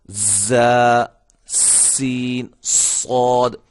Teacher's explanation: یہ جب ادا ہوتے ہیں تو سیٹی کی آواز پیدا ہوتی ہے